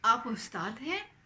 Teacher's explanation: the intonation will rise in the end. That's how we know that you're asking a question.